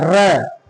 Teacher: तो र को बोलते समय र का उच्चारण करते समय जीवा में कंपन होता है। वाइब्रेशन होता है। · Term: प्रकंपित